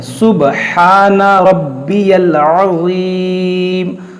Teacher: ضا کو نرمی سے اور موٹا کر کے پڑھیں گے اور رب اور را کو موٹا کریں گے.